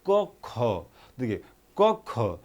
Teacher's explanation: क पे कम बल पड़ रहा है, ख पे ज़्यादा बल पड़ रहा है